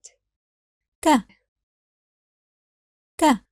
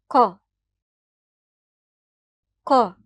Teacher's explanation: However, in Arabic, it’s slightly aspirated, [k], [k]. If the back of your tongue moves a bit further back to press against the soft palate, we will have the sound [Q] with no aspiration at all, [Q], [Q]. With [k], the back of the tongue rises and presses against both the hard and soft palate.